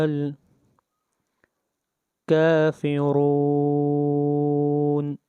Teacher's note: را کے اوپر پیش آئی ہے اس لیے اس را کو موٹا پڑھیں گے۔ جہاں بھی را کے اوپر پیش یا زبر آئے گی وہاں پر را کو موٹا پڑھا جائے گا۔